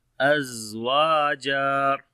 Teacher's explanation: Waw we long due to alif madda, and jim also we long due to alif madda.